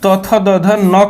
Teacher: तो दंत से आपका तथ दध न का उच्चारण दंत से होता है